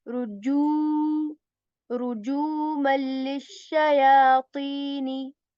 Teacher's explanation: The ju sound is, stretched a bit, and you will hear this oo sound